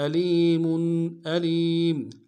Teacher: میم کے اوپر تنوین ہے، غنہ کریں گے